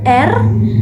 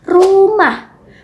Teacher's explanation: saat mengucapkan bunyi R lidah kita harus terangkat sedikit tetapi jangan sampai menempel di langit-langit mulut